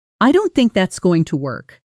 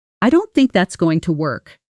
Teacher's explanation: a flat falling intonation, almost like a statement of fact, with no softness at all · Now listen to the same words with a slight rise near think, and a gentler fall at the end.